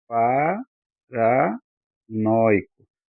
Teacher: Eu subo na minha tonicidade, né, quando eu falo nó, e desço eh na tonicidade quando eu falo i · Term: Vogal e semivogal